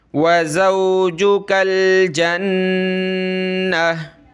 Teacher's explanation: नून पे तशदीद है तो हमने गुन्ना करना है, नाक में आवाज़ पैदा करनी है।